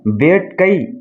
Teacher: கை என்பது கடைசில ஐ வந்திருக்கிறதுனால ஒரு மாத்திரை அளவுல ஒலிக்குது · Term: ஐகார குறுக்கம்